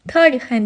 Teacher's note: Amma tarixən deyəndə vurğu A saitindədir. Azərbaycan dilində də çox hallarda vurğulu heca uzun tələffüz olunmur.